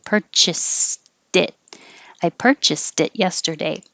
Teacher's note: So when it's connected to a vowel after it, the purchased now changes, the T changes to a D.